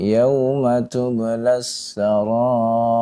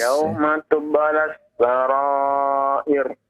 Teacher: Ra yang di akhir di kalimat tersebut sebelumnya adalah kasrah ya. Maka dibaca dengan tipis, jangan ditebalkan ya.